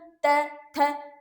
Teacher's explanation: जीभ दांतों के बीच में आके उच्चारण कर रही है। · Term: दंत्या